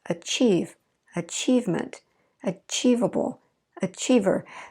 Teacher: we just kept our stress on that second syllable